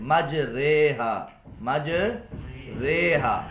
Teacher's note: جھکاؤ، جھکا کر پڑھنا. فتح کو کسرہ کی طرف، فتح کو کسرہ کی طرف، الف کو یا کی طرف مائل کر کے پڑھنا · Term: امالہ